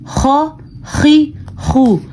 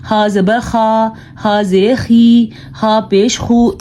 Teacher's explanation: صحیح پڑھنے کا طریقہ ہے خا زبر خا, خا زیر خی, خا پیش خو, خا خی خو. تھوڑا سا گلے میں خرخراہٹ پیدا ہوتی ہے